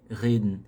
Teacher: O finalzinho engolindo ali a letra E.